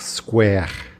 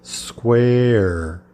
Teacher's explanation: A vogal é mais fechada e termina naquele R caipira bem puxado